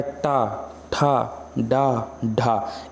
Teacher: जब जीभ मुड़ करके जा करके ऊपर की तरफ टकराती है तो मूर्धन्य कहलाती है